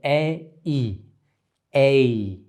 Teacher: So the jaw closes, A, and the tongue moves upward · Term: off glides